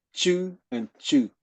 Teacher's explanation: two different characters pronounced at the first tone and at the fourth tone